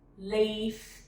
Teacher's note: It kind of spread and smiley because I know I'm saying the high front vowel next.